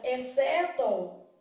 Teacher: na palavra exceto o x não é pronunciado então na palavra exeto X C estão formando aqui dígrafo né